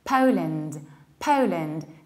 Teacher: We need to remember about two things, rounding the beginning and saying po, and reducing the ending and saying lind.